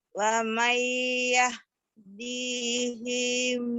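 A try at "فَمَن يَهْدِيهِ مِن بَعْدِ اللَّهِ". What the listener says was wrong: Famai, bukan wamai, famai, Pak. Famai dihim ba'dillah. Famai yahdihi min ba'dillah.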